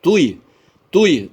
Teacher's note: Você tem o u ali dominando, você recebendo o acento tônico